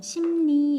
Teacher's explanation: 심리 같은 경우에 미음에다가 리을이 더해졌죠. 미음에다가 리을이 더해져서 심리 이렇게 니은으로 발음이 났죠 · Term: 리을의 비음화